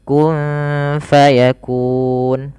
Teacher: karena sebabnya adanya sukun Arid Nun yang awalnya berharakat kemudian diwaakaf kalau kita wakaf maka nunnya menjadi mati ini namanya sukun Arid bukan sukun asli